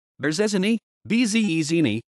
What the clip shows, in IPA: bʐɛˈʑinɨ